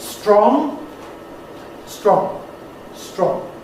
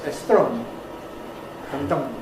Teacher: In English, that’s one syllable, /strɒŋ/, but depending on your first language, it may sound as if it’s two syllables